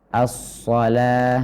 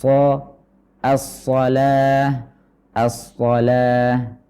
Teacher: jadi kita menebalkannya dengan catatan yang telah kita berikan tadi yaitu mengangkat pangkal lidah dan juga menyempitkan sedikit Bagian tenggorokan sehingga suara itu terarah ke langit-langit atas